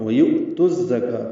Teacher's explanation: وَيُؤْتُ الزَّكَاةَ میں واو ہونٹ ہوگی نا تمام گلائی سے. یو میں یہ حمزہ واو کی شکل میں ہے، جھٹکے سے ادا